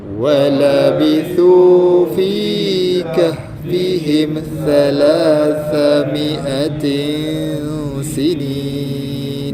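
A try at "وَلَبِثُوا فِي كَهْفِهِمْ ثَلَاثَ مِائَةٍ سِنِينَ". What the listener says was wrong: Mi'atin tu dia pendek ya. Mi'atin sini.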